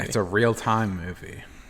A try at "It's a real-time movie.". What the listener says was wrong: No, I think you're doing the emphasis on the words wrong. It's a real-time movie.